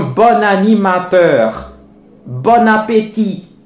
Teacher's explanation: Donc maintenant, ce procédé s'appelle dénasalisation. Le son on se dénasalise pour prendre sa forme, sa prononciation initiale qui est o.